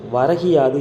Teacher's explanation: முதல் சொல்லில் இறுதியில் உள்ள கு எனும் எழுத்து கி என்று ஒலிக்கிறது. அதுவும் முழுமையாக ஒரு மாத்திரை அளவில் ஒலிக்காமல் அரை மாத்திரை அளவாக குறைந்து ஒலிக்கிறது. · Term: குற்றியல் இகரம்